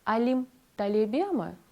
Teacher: літера і в афіксі читається не як м'яка і ми вимовлятимемо її твердіше